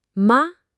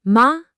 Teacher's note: It starts kind of in the middle of my voice and just goes straight up, ending around where the first tone lives. It should be a really smooth ride up. · The key thing to listen for here is a nice smooth upward slide. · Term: second tone